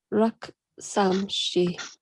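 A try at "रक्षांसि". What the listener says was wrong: Yeah, Rakshamshi. This is a Sha.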